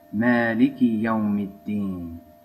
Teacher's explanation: So D is a sun letter, so Al-Deen becomes Ad-Deen. And then we're going to just add an I at the end of the K in Malik, so it's going to become Maliki Yawmiddin.